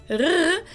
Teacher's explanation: the R is pronounced in the back of your throat, like in French, R, but if you can do a rolled R like in Spanish, that works too.